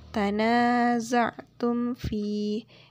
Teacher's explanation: Di sini dengan hukum bacaan yaitu izhar syafawi, yaitu dibaca dengan jelas, dibaca dengan tidak berdengung